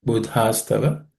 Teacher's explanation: Then second word Buddhastava, in the second letter is Dha, which is aspirated.